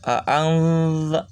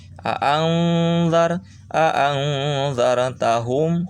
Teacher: ketika ang tempelkan langsung ujung lidah ke ujung gigi atas. Aangzar jangan ke eng ya.